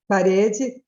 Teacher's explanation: com uma língua mais retroflexa, quase que um som retroflexo